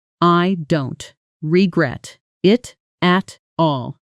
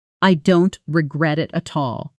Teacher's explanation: Fast and natural. The T sounds soften and disappear into the next word, almost like a light tap instead of a hard stop.